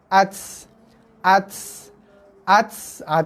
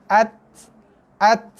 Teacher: Lepaskan tekanan lidah, lepaskan lidah daripada gigi, belakang gigi tu, berserta dengan sedikit sangat hembusan nafas yang keluar. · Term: huruf ta mati